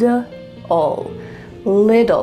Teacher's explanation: in American English, those T's are going to become D sounds. So it's going to sound like lid.